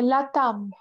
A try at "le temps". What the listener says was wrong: Le temps. And this one not a m, but just you need to pronounce it with your nose.